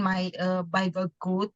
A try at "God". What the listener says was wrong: God. Karena O-nya beda. Kalau O-nya 2 bacanya kalau O-nya 1 bacanya O, tetap O. God.